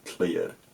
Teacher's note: a cl or a gl cluster, a k-l or g-l, will become tl and dl in later Cumbrian.